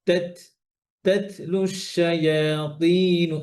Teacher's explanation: তো যেমন এই যে তা, তা যখন সুকুন হয় তখন এই হামসটা বাতাসটা স্পষ্টভাবে বেশি স্পষ্ট হয়